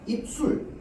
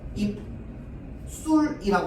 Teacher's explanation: 표기를 술로 해도 상관없어. 왜냐면 비읍 받침 뒤라서 무조건 발음할 때는 된 소리 일어날 거거든